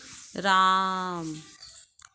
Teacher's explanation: बहुत लंबा एक स्वर खिंचता है जिसमें हमें 3 अक्षरों की साउंड सुनाई देती है। अर्थात जिस स्वर को पुकारने में या जिस स्वर का उच्चारण करने में दीर्घ स्वर की अपेक्षा 3 गुना समय लगता है वह प्लुत स्वर कहलाता है।